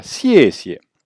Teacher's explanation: Un ton descendant et un ton neutre.